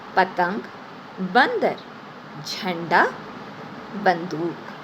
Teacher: यह है अंक का चिन्ह। अंक का उच्चारण हम नाक से करते हैं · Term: अनुस्वार